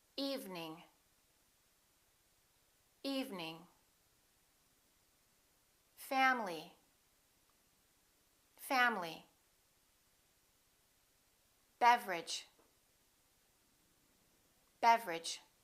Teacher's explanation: each one of these words contains one vowel one syllable which is not pronounced